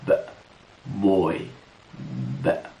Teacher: الصوت ده يعتبر شفهي ونستخدم فيه الأحبال الصوتية، يعني نستخدم الشفاه lips، الشفاه، والفوكال كوردز الأحبال الصوتية بس. · في vibrations، في اهتزاز، يبقى الصوت voice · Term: صوت ال B, voiced